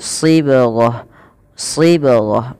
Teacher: Nah, yang di sini untuk lafal taknya, bila kita wakaf, huruf tak dimatikan dengan bunyi bacaan huruf ha, bukan lagi sibghat tapi sibghah